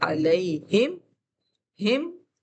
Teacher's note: हम उसे बगैर गुन्ना किए मीम को जाहिर करके पढ़ेंगे और मीम की आवाज में कोई गुन्ना कोई पुलिंग कुछ भी नहीं होगा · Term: इजहार शफी